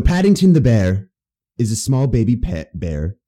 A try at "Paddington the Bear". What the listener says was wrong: Bear. You need to say this more of a British accent. Paddington the Bear. You were half-assing just a British accent.